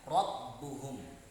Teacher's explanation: Takrir artinya adalah bergetar, yaitu mengucapkan huruf dengan ujung lidah bergetar.